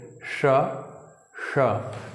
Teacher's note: सा ऊपर तालू में ऊपर सटा करके बोलना है श और मुर्धन का थोड़ा सा और अंदर जा करके बोलना है श ठीक है ष ष तो ये होता है मुर्धन्य स